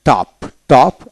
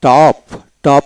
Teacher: ওতে ব্রিটিশে অ খাটো উচ্চারণ হয়, আমেরিকান দীর্ঘ উচ্চারিত হয়